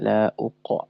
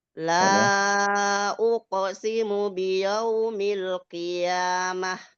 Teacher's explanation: Qof yang sukun itu tebalkan bukan ditipiskan.